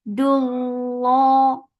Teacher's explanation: Dal will be light, but lafz jalala will be heavy. Dullah. Two counts long.